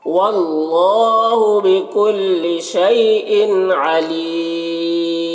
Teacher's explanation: مد عارض وقفی ہوگا. اس میں طول توسط قصر تینوں جائز ہوتا ہے. طول اولا ہوتا ہے, پھر توسط, پھر قصر کا مرتبہ ہوتا ہے.